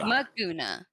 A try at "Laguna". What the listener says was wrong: Laguna, not Maguna. Are you saying it with an M or an L? It's with a, it's with an L.